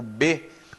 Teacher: com os lábios né Tem sons que são bilabiais por exemplo o bebê é um som bilabial porque você junta os dois lados para fazer